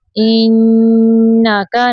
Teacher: नून मुशद्दद पे गुन्ना करेंगे